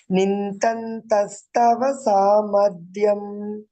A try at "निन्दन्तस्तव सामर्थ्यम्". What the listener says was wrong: No, samartyam. Samarthyam. Tha. Second tha.